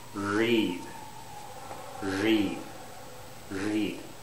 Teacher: And the tongue doesn't touch the alveolar ridge. It's curled up.